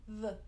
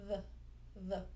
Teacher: So the voiced TH, as it says, is voiced. You use your vocal cords. V. The tongue is just behind the top teeth.